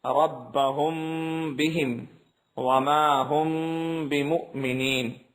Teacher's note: میم ساکن کے بعد با آ جائے تو غنے کے ساتھ اخفا ہوگا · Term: اخفا شفوی